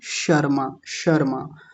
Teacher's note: जब शर्मा बोलेंगे तो उस समय हमारी जीभ कहाँ जाकर के लगेगी? शुरू में उसी तालू पर जाकर के लगेगी। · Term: तालव्य शकार